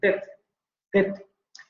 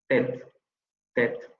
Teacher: en francés como en español va a ser una dental oclusiva sorda. Por eso es más adecuado hablar de dental.